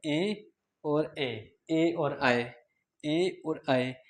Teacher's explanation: कंठ तालु से बोले जाते हैं।